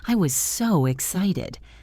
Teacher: Punch the word excited. Stretch the vowel excited.